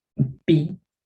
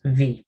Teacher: esta es la B labial y esta es la B dentilabial o labiodental